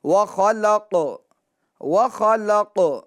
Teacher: واو زبر و، خا زبر خا، وخ، لام قاف زبر لق، قلقلہ ہوگا، قاف کے اندر آواز لوٹے گی، وخلق، وخلق، قاف خا کو بھی پور کریں گے اور قاف کو بھی پور پڑھیں گے، موٹا پڑھیں گے، ٹھیک ہے، کیونکہ یہ حروف مستعلیہ میں سے ہے۔